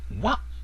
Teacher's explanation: Wah in a short, low cut-off tone, sometimes called the first tone, is fat, chubby, and full.